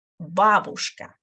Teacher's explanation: The correct stress is going to be on the first letter right here.